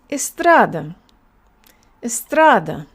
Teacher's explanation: The next syllable tra and the last syllable da. Read it all together and make sure that the middle syllable is longer. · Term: stress